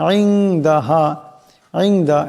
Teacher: ওয়াজাদা ইনদাহা রিজকা ইনদাহা, ইনদা এখানে নুন সাকিন, নুন সাকিনের পর দাল আসছে, দাল ইকফার হরফ, এখানে নুন সাকিনকে একারে পরিমাণ ইকফার গুণনা করিয়া পড়তে হবে।